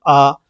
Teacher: विवृत स्वर जिसमें मुंह जो है आपका पूरा खुलता है।